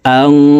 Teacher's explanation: এই নুন সাকিনকে নাকের ভিতরে লুকাইয়া গুন্নার সহিত পড়তে হবে